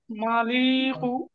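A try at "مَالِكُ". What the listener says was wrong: মা, মিম শুধু টান হবে, তারপরে দুটো টান হবে না।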